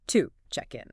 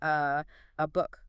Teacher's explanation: To the schwa sound. That little neutral uh sound. So to check in becomes to check in.